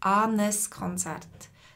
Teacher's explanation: Darum sagen wir anes Konzert. Also das N ist nur da zum Verbinden. N verbindet zwei Vokale.